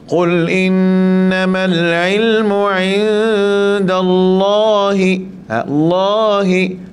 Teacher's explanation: Bila sebut nama Allah lafzul jalalah kita kena angkat nada dia mengagungkan nama Allah.